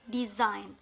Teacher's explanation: the syllable is weak when it ends with the short vowel I and the next syllable start with a consonant. For the example like design, the first syllable is weak.